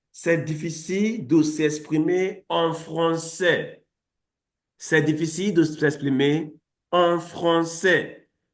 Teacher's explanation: L'emphase est sur le mot français. Telling you that in French generally, you put the emphasis on the last syllable in the sentence. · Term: intonation assertive